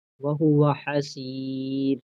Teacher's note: اگر یہ را ساکن ہے، را کے اوپر تو پیش ہے، لیکن یہاں باریک پڑا جائے گا کیونکہ یہ را ساکن ہے، اس سے پہلے یا بھی ساکن ہے، لیکن اس سے پہلے سین کے نیچے زیر ہے، تو یہاں پہ را باریک پڑا جائے گا.